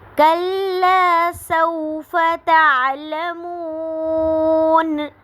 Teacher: تعلمون پہ جو ہے واو ساکن سے پہلے پیش آ رہی ہے، تو واو مدہ ہو رہا ہے، اور اس پہ ہم نے وقف کرنا ہے تو نون کو ہم ساکن کر دیں گے.